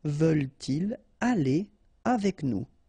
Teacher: If you've got this structure, so in which your pronoun is coming after your verb because it's a question, then you don't make the liaison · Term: no liaison